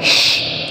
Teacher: Kemudian jangan sampai lupa bahwa huruf shin, ya, huruf shin itu adalah huruf lisan, wastul lisan, keluarnya tengah-tengah lidah kita. Dia bukan huruf bibir. Maka dari itu yang bergerak, ya, bibir kita tidak harus maju ke depan, tidak boleh.